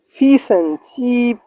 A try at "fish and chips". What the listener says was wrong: Fish and chips. That is S. Chips. chips, not chip.